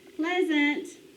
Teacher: Accents on the first syllable.